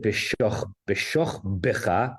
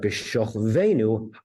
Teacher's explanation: Because the vowel under the shin before it is a kamatz katan, which is a short vowel. So why is it b'shoch b'cha, hard ba, but b'shoch veinu, soft va?